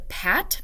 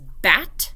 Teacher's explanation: All of those sounds like the P and B are both labial stops, but one is voiced and one is voiceless.